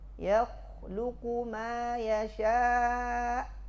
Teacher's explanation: Itu kha tebal, lam tipis-tipis kan.